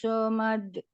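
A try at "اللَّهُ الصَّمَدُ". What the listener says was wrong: Lo-nya kepanjangan, Bu. Lo-nya kepanjangan. Allahus samad. Allahus samad. Sodnya dialirkan dulu. Ya, lebih banyak ya rokhwahnya. Allahus samad. Samad. Sebelum dilanjutkan nanti pengucapan somade itu seperti ini ya. Seperti misalkan kita somade. Somade. Somade. Jadi D-nya itu jelas. Somade. Somade. Ringan. Allahus samad.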